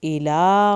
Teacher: इला खड़ी ज़बर को खींचना है।